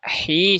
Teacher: huruf ha sama ya tadi keluarnya dari tengah tenggorokan